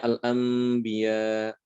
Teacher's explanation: diubah menjadi huruf mim sukun ya diganti menjadi mim sukun yang nanti akan dibaca dengan Ikhfa disertai dengan ghunnah · huruf nun ya nun sukun setelahnya ada huruf ba ya jadi NU nya diganti dengan mim habis itu didengungkan dan dibaca secara samar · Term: iqlab